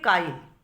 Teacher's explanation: কিন্তু যখন আমরা কাইল বলছি তখন দেখো লয়ের আগে ইকারটা উচ্চারিত হচ্ছে